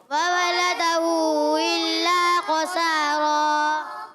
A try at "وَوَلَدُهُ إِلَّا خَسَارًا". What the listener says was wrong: لام پر زبر ہے، پیش نہیں پڑھیں گے، دال پر پیش ہے اور ہا پر الٹی پیش بھی ہے اور ساتھ ساتھ مد بھی ہے، کھینچنا بھی ہے. وولده، ٹھیک ہے، وولده إلا خسارا.